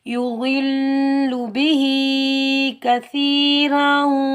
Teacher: आगे वक्फ़े मुतलक की अलामत है, रा के ऊपर तनवीन है, रा को हम मोटा पढ़ेंगे